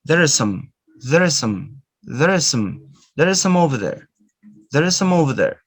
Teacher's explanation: Notice that 3 words, there are some, becomes just one.